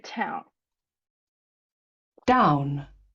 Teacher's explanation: you may hear a Glide from ah to U in down in town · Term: diphthong